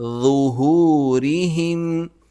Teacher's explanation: زبان کی نوک اگلے دانتوں کے درمیان دیں، نرمی سے اور موٹا اس لفظ کو نکالیں. ظہورہم، ہا کو میم سے ملائیں گے. · ضا بالکل ذال کی طرح نکلتا ہے، بس ذال باریک ہوتا ہے اور ضا موٹا پڑھا جاتا ہے. زبان کی نوک اگلے دانتوں کے درمیان دیں، نرمی سے اور موٹا اس لفظ کو نکالیں.